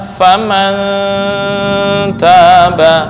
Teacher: Cara membacanya samar lebih besar daripada dengung. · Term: ikhfa aqrab